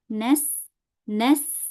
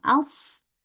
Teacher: berdesis ya seperti tadi s gitu ya sama s ya seperti ular as as ya as as kemudian huruf sin juga nas bedanya kalau huruf sin dia tipis hurufnya kalau huruf shad dia tebal hurufnya